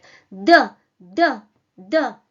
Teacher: The majority of Russian consonants are produced in this position, pressing the tip of the tongue against your upper teeth, like D, D, D.